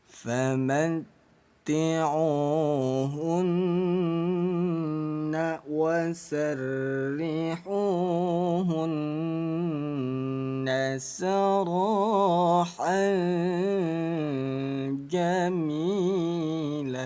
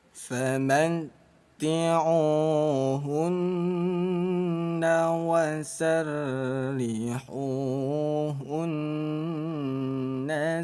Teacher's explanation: nun yang bertasydid ini kita tahan dulu bacanya ayah bunda. Hun ketuk 2 kali. 1 2 lanjut. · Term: gunnah musyaddadah